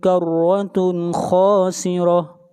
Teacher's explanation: تنوین کے بعد حروف حلقی میں سے خا ہے، اس لیے اظہار ہوگا